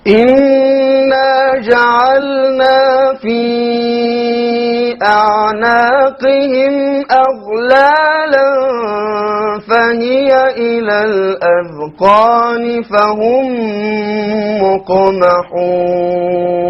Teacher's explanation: Fahum, silent meme followed by another meme. Idgham Shafawi. Fahum, so he'll have to do also, what type of, he'll have to do gunna.